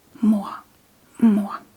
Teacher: whenever the R is placed at the end of the word, it usually comes after a vowel and it gives the very soft throat sound